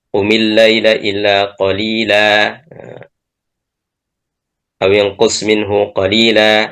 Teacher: Jadi mengganti tanwin nasab, ya, ketika kita waqaf di situ menjadi alif, ya. Hukmuhu wajibun, hukumnya wajib, miqdaru harakatan, ukurannya adalah harakatan. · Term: mad iwad